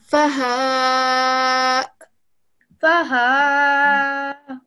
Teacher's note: you have a hamza, and you give it that sharp alif sound. So, faha.